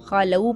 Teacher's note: خَلَوْا خا کو موٹا پڑھنا ہے ، واو مدہ کو ادا کرنا ہے، خَلَوْا پڑھنا ہے، خَلُو